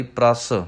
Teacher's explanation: ਪੱਪੇ ਨੂੰ ਬੋਲਣ ਵੇਲੇ ਬਹੁਤ ਘੱਟ ਸਮਾਂ ਲੱਗ ਰਿਹਾ, ਰਾਰਾ ਪੂਰਾ ਟਾਈਮ ਲੈ ਰਿਹਾ। ਪ੍ਰਸ ਪਰਸ ਨਹੀਂ, ਜੇ ਪਰਸ ਕਹਾਂਗੇ ਪੱਪਾ ਪੂਰਾ ਬਣ ਜਾਏਗਾ।